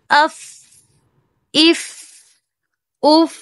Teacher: اس میں پستی ہے اور اس میں سانس بھی جاری رہتا ہے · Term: ہمز کی صفت